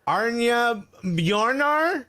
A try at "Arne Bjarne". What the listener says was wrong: Arna Bjarna. With no R. Bjarna. It's Bjarna.